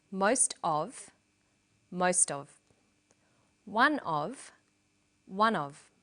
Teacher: in sentences these phrases will usually become linked together